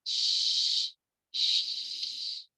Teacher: Tafasyi ini adalah menyebarnya udara gitu. Jadi di dalam mulut kita ini tersebar nafas ketika menyebutkan huruf shin. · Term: sifat tafasyi